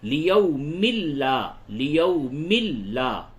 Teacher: جیسے لیومن ہے تو اب من نہ بول کر کے مل بولیں گے، یعنی کہ نون کی آواز کو لام سے بدل دیں گے، لیکن غنہ یہاں پہ نہیں کریں گے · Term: ادغام بلا غنہ